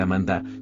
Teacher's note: en español y portugués suele pronunciarse Amanda, con énfasis suave en la segunda sílaba. En inglés, en cambio, se escucha Amenda, con una ligera modificación vocálica que le da un toque diferente pero igualmente melodioso.